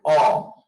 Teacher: যেমন আমি যখন বলি অ, তখন কিন্তু এটি কিন্তু ফুসফুস আগত বাতাস মুখের কোথাও বাধাপ্রাপ্ত হয় না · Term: স্বরধ্বনি